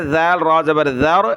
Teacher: ذال کو باریک کیا، را کو موٹا کیا